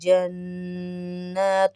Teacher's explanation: جناتو میں نون کھڑا زبر ہے، نون کے اوپر تشدید بھی ہے، غنہ بھی ہوگا اور کھینچے گا بھی